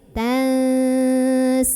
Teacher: Wala tansa ada ikhfa ausat karena ada nun sukun ketemu sama huruf sin. Maka cara membunyikan nun sukunnya ini adalah samar-samar menuju huruf sin sambil dengung.